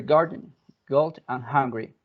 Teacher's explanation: if you put your hand over your throat, you can feel a little vibration over there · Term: voice velar plosive